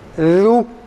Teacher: ü sesiyle değil de u'ya yakın bir sesle veya u şeklinde çıkarılması gerektiğini söylüyoruz